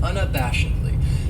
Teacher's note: That second syllable has that schwa, that sound, unabashedly.